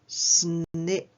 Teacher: we pop on the end snip there did you hear it that explosive sound our lips coming apart quickly